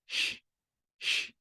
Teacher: SCH em alemão é sempre um chiado